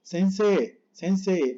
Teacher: Puedes decir la I, si quieres la puedes decir, pero muy suave. Sensei, sensei, así, muy poquito. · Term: doble E